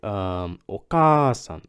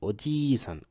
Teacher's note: You gotta make the first vowel longer. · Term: double same vowel